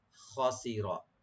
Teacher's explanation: ফাকাদ খাসিরা, খাসিরা এই শব্দে কোনো টান নাই, নরমাল করে পড়বেন শুধু জের জবর দিয়ে। খাসিরা, সিন পাতলা আর রা একটু ডিপ হবে, খাসিরা, আর খ একটু মোটা হবে, এখানে ডিপ হবে।